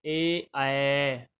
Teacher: आवाज आएगी आपको कंठ और तालु दोनों से